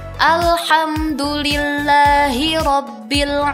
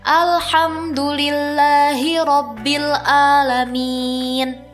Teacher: makhraj huruf ain ada di tengah tenggorokan, sedangkan hamzah ada di pangkal tenggorokan. Maka pengucapannya jangan sama ya, harus terdengar seperti ini.